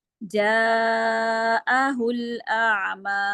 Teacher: मद है ना वो चार हरकात के बराबर लंबी करनी है